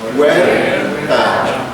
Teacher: Fíjense la U, débil, cerrada. La E, fuerte, abierta. Es un diptongo y no debe separarse